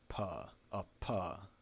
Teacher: P makes a voiceless bilabial plosive